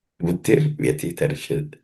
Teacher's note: Tarishyati also the sh is cerebral sh. Other than that, there are no aspirated consonants in this verse.